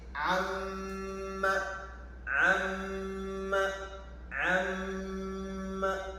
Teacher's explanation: Out together, the nun enters into amma. So the nun sound is there even with no mim, because mim also passes into the nose.